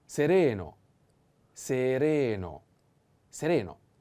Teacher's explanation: And sereno, I have to put the accent on the second E.